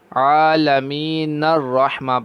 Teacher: نر یعنی نون کو را کے ساتھ ملا دیں